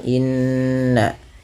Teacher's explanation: Tahan pada lafal bunyi nun yang berharokat tasydid karena ia bacaan gunnah